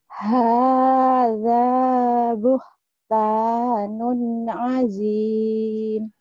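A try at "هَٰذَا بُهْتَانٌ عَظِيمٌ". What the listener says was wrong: Hadza buhtanun azim. Jangan lupa nutup mulutnya. Kedengarannya kayak azin. Azim. Bibirnya dirapetin biar lama. Azim.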